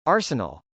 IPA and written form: ˈɑrsənəl (arsenal)